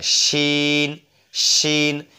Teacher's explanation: শিন হরফটা উচ্চারণ হবে আপনার জিহ্বার মধ্যখান তারপর ওপরে তালুর সঙ্গে লেগে